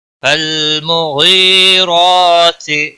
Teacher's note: لام کو ہلانا نہیں، غائن کو موٹا پڑھیں گے، یا مدہ ہے، 1 الف کے برابر کھینچ کر پڑھیں گے